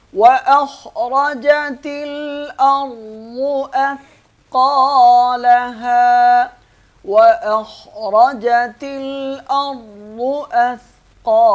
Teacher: واخرجت الارض، را اور واد بھی موٹے ہوں گے۔ اثقالها، ثا میں سین کی آواز نہیں آئے گی، قاف کو موٹا پڑھیں گے۔